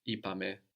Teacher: it's the only time actually we get the accent third from the end